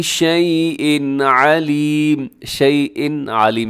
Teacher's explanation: یہاں تنوین کے بعد عین حروف حلقی میں سے ہے تو یہاں پر اظہار حلقی ہوگا، یعنی آپ نے اس کو تیزی سے پڑھ دینا ہے، یہاں غنہ نہیں کرنا۔